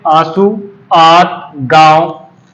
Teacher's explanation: नाक और मुख दोनों से ही वायु निकलती है, लेकिन नाक की अपेक्षा मुख से वायु अधिक निकलती है। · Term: अनुनासिक